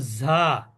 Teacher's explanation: জিহ্বার আগা উপরের দাঁতের আগা